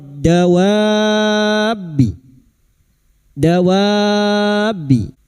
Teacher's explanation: bertemunya huruf mad dengan tasdid mad lazim kilmi mutsyaqol kita panjangkan enam harakat